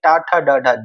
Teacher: जीभ हमारी थोड़ी फोल्ड होकर दांतों से पीछे वाले भाग में यानी कि मूर्धा में टच होती है इधर का जो भाग होता है वो मूर्धा होता है ठीक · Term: मूर्धन्य